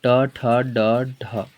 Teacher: मुंह से हो जाएगा मूर्धा, मूर्धा से बोला जाता है